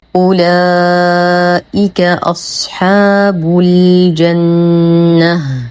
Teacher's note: نشد النون بغنة أكمل ما تكون، ونقف على التاء المربوطة دائما بهاء ساكنة